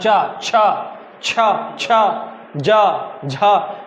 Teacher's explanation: चा वर्ग जो है वो संघर्ष स्पर्शी व्यंजन कहलाता है।